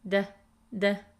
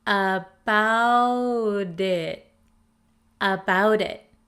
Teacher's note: the flap T in American English sounds like a soft D sound